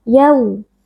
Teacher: wau sukun yang sebelumnya berharakat fathah wau sukun kita baca dengan lunak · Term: Lin